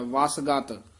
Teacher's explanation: ਵਸ ਕਸ ਕੇ ਬੋਲਣਾ ਗਤ ਪੋਲਾ ਬੋਲਣਾ